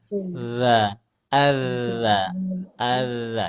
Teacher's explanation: huruf dalnya jangan dicampur angin Bu enggak perlu disemprotin